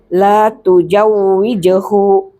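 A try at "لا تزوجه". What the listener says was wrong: Zai dulu baru jim. Soalnya di beda nanti arti.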